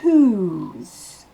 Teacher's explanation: Whose. Avec le S, ça va se prononcer whose. Comme un Z à la fin. · Le W ne se prononce pas. Le H est soufflé. Et ensuite, le O se prononce OU. Un OU long. Whose. Avec le S, ça va se prononcer whose.